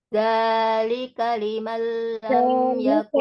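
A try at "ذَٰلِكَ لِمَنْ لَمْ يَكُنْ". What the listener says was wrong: Nah, za-nya juga kepanjangan itu.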